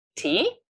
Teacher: First of all, the key word tea, but also intonation going up at the end of the word, indicating that this is, in fact, a question